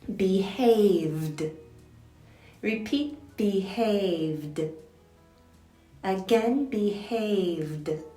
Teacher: it's a voiced sound so we add the voiced D sound when we make it past tense